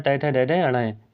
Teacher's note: टय वर्ग का उच्चारण मूर्धन्य होता है